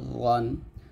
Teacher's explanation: প্রথম তিনটা জিহ্বার আগা উপরের দাঁতের আগার সঙ্গে লাগবে